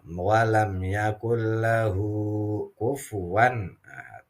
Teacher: ini yang dinamakan Mad Silah qasirah jadi makanya agak panjang